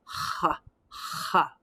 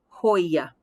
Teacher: so in spain a little bit more pronounced whereas in in latin america you might get more hoya little softer it's a little harder for me because that's not the way